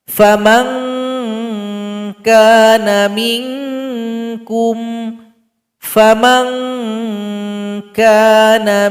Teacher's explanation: Kemudian bunyinya mengarah kepada huruf qaf dan huruf kaf. Kemudian huruf qaf dan huruf kaf tempat keluarnya itu pangkal lidah. Jadi nanti bunyi ikhfanya ang, ing, ung. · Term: ikhfa adna